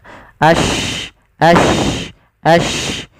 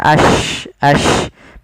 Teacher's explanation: Shin itu kan salah satu sifatnya tafashi, intisarus shauti fil fam, yaitu adanya menyebarnya suara kita di mulut banyak.